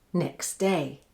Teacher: the stop consonant T is the sound which has disappeared and is the sound which most often disappears when the following word begins with a stop, nasal or friction sound.